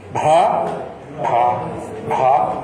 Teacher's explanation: A aspiração não significa abrir o ar. É Bha. É breve.